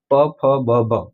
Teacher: બંને હોઠ ભેગા થઈને ઉચ્ચારણ થાય છે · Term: ઓષ્ઠ